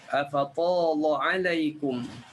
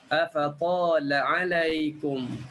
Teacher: lam boleh dibaca dengan dua wajah, sama ada nak taulidh boleh ataupun nak tarqiq pun boleh